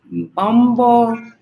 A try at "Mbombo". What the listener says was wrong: Well done, yeah. Good. The tonality is good.